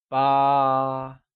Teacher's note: 8 is ba, pronounced with a high level tone